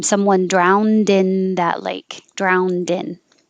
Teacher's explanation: you won't hear the d if i just say drown but if i use it with a vowel after it then it will connect